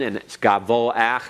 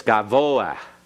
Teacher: You have to kind of flutter the back of your throat a little bit because the hey here is not a silent hey. That's why you have a dot in it. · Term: slight flutter in the throat